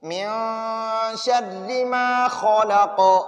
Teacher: قاف وقف کی وجہ سے قلقلہ ہو جاتا ہے، ٹھیک ہے، ساکن ہوتا ہے تو اس پر پھر ہم قلقلہ کریں گے۔